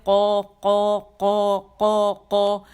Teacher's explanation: جب زبان کی جڑ جا کے نرم تالو سے لگتی تو قو ادا ہوتا ہے